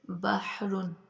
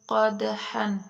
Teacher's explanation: ہا کی آواز درمیان حلق سے رگڑ کھا کر نکلتی ہے